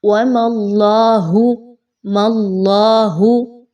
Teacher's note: اور اس سے پہلے وَمَا اللَّهُ، اللہ کے حرف سے پہلے میم کے اوپر چونکہ زبر ہے، زبر کی علامت ہے، اوپر کوئی حرکت آ گئی ہے تو اس وجہ سے اللہ کے حرف کو بھی پر پڑھا جائے گا، باریک نہیں پڑھنا